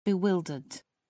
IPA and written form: bɪˈwɪldəd (bewildered)